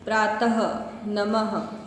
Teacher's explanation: उसके बाद है विसर्ग। विसर्ग का उच्चारण सिर्फ गले से होता है। प्रातः, नमः, ठीक है, और ह की साउंड निकलती है।